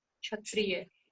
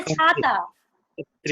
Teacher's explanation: जैसे क्षत्रिय में छ बोलने से हल्का जीव मुड़ता है, और छाता में छ बोलने से जीव हल्का मुड़ता नहीं है